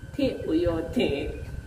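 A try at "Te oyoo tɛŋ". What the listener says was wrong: So you don't drag the ten.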